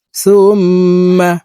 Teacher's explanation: ওয়াজিব গুন্নাহ 3 সেকেন্ড পরিমাণ গুন্নাহ করে পড়ব